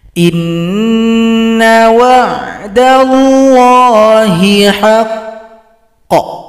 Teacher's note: kalau berhenti maka huruf qof disukunkan. Tunggu dua ketukan baru dipantulkan.